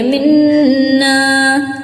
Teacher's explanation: نون میں غنہ کریں گے، منا، انکا، انکا میں بھی نون میں غنہ کریں گے، نون پر مشدہ لگ جاتا ہے، تشدید لگ جاتا ہے تو غنہ کی جاتی ہے، اوکے۔